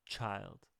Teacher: The ch sound is producing a lot more wind and air.